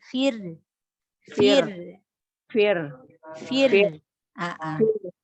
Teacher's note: Fir, roknya dibaca tipis karena sebelumnya huruf kasroh.